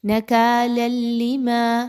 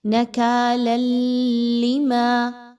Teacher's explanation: یہاں پر آپ نے ادغام کرنا ہے لیکن غنے کے بغیر، یعنی یہاں پر آپ نے ایک لام کی آواز کو دوسرے لام کی آواز میں مرج کرنا ہے، مکس کرنا ہے، لیکن غنہ نہیں ہونا چاہیے۔